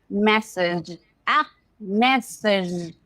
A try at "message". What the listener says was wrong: Add a D. Add a D. Message. No G. Message.